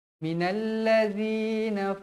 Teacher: Minalladzi, zi, jangan baca minalladzi, tak nak. Zal nipis, zal pastikan zal, lidah kita terkeluar sedikit.